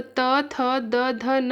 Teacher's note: और हमारे दंत में क्या आएगा, तो त थ द ध न आएंगे